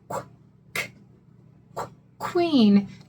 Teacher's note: Notice that u says the w sound. So it's not a vowel in this word.